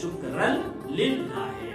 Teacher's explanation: تو شکرن کا جو نون ہے وہ لام میں بدل جائے گا، شکرن للہ ہے، اور ادغام ہو گیا.